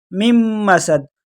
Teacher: میم کو نون کے ساتھ نہیں ملانا، بلکہ میم کو آگے دوسرے میم کے ساتھ ڈائریکٹ ملانا ہے، بیچ میں سے نون حذف ہو جائے گا